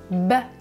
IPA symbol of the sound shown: b